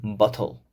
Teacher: In some RP variations, the T sound is replaced by a glottal stop, as in bottle.